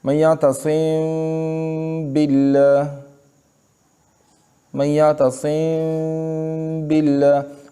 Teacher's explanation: اس میم کو ادا کرنے کے وقت دونوں ہونٹوں کے خشکی کے حصے کو بہت نرمی کے ساتھ ملا کے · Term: اخفا